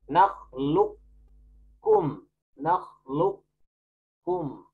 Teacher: Kita boleh membaca dengan idgham naqis dengan memasukkan huruf qaf, sifat tebal pada qaf, terus pindahkan ke kaf.